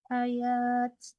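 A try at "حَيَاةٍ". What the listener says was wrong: Kalau mau berhenti hayah jangan hayat. Ya itu namanya yang dinamakan ta marbutah.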